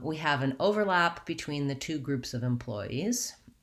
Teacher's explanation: i'm slightly louder on the first syllable i'm going slower there's more duration there and i'm going quickly on the second syllable